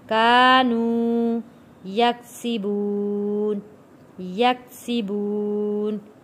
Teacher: کلا بل ران علی قلوبہم ما کانوا واو ساکن ہے، واو ساکن سے پہلے پیش ہے، تو یہاں پہ ہم نے ایک الف کے برابر اس کو کھینچ کر پڑھا ہے